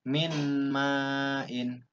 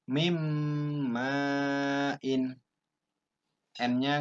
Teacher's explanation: N-nya nggak usah dibaca, langsung ke maknya. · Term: idgham bigunnah